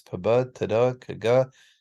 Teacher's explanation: all of these sounds stop the air completely. No air comes out of the nose or mouth. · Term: stops